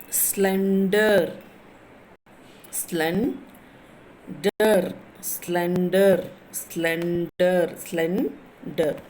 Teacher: So the two syllables are there, so you are stressing at the SLEN, slen. Stress చేస్తున్నారు, స్లెన్ని stress చేసి DER you are releasing slowly, మెల్లిగా release చేస్తున్నారు.